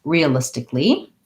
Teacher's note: the syllable stress is on the third syllable